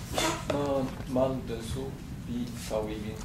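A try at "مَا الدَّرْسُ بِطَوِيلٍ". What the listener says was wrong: Yeah, but it is ad darsu because it's shamsiya. So you will say mad darsu instead of ma al darsu. Mad darsu bi tawilin.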